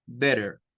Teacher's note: como que fuera una r suave